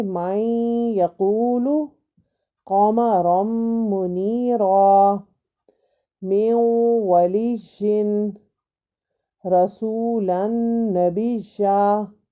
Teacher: ہم لوگ اس میں آواز کو مرچ کریں گے، ملائیں گے، اور اس کی آواز اپنے ناک میں بھی لے کے جائیں گے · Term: ادغام بالغنہ